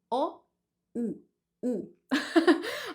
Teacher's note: you see the U, it's not as open as the O